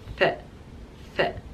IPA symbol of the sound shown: θ